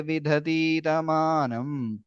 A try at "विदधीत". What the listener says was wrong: In that vidadhita, be careful. The second dhakara is Mahaprana. First is Vidadhita.